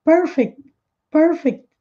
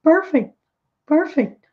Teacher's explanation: pronunciado todas as letras mas tem de forma muito Sutil esse CT aqui no final